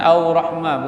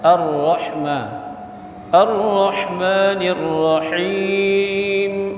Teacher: Jangan au rahmah, bukan au, bukan waw, tapi ra tasydid